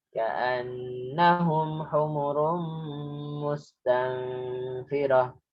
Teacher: Di sini ka'anna guna asli. Humurumu itu idgham biguna. Tanwin dengan mim.